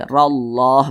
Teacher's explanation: huruf ra yang memiliki tanda baca fathah dibaca tebal